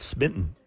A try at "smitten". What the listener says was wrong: No, smitten. You can't say T's, can you?